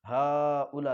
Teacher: हा के ऊपर खड़ा ज़बर, उसके बाद हमज़ा इसी कलमे में, ये भी मद्द मुत्तसिल, इसको भी अच्छे तरीके से खींचेंगे।